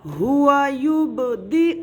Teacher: با ساکن ہے, اب با کی آواز لوٹتی ہوئی سنائی دے گی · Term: قلقلے